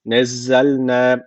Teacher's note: Z Keskin Z Peltek değil Keskin nezzelnez Med var Sonra uzun Elif gelmiş o zaman burada